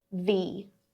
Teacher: V, the v sound, voiced v, and then the long E